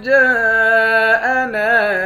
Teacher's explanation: جیم کے بعد الف ہے، اس الف پر مد ہے، اس مد کو پانچ الف کے مقدار کھینچ کر پڑھیں گے